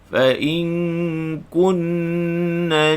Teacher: Panjangkan dengung nun musyaddadah wajibul gunnah.